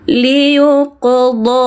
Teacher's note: qafnya pantulkan, huruf qalqalah memantul, pantulkan ringan saja ya.